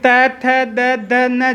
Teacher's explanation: जिह्वा दांत के लग रही है, इसलिए इनका नाम दंत्य वर्ण है, दांत से बोले जाए, दांत पे स्पर्श करके हो रही।